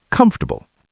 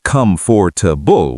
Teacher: We don't say come for to bull with clear syllables. We say comfortable like one quick word.